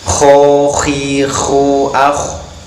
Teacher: dari tenggorokan yang paling atas dengan suara mendengkur dan bibir mencucuk